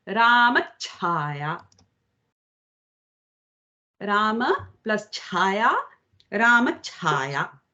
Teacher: So between the Rama and Chaya, a ch is added. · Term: tugāgama